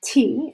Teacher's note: put your hand in front your face say it t and you should feel a puff of air on your hand because in English that T is aspirated